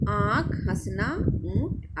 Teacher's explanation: अनुनासिक स्वर वे होते हैं जो स्वर मुख और नाक से बोले जाते हैं